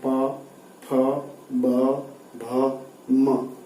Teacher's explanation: प वर्ग का उच्चारण होता है वो हमारे होंठों से होता है, जो हवा होंठ से टकराती है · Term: ओष्ठ्य